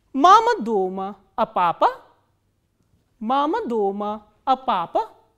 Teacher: you start from the medium pitch, it comes down towards the last stress syllable, and then again it rises up and comes down